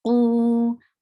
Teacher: qaf is heavy, and we are making it 2 haraka long.